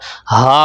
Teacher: اس ہا کو اپنے حلق کے نیچے والے حصے سے پڑھنا ہے، ہا پڑھنا ہے، اس کو ہا نہیں پڑھنا۔